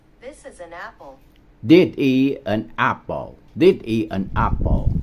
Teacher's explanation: Chữ N link với chữ A này thành ra chữ apple.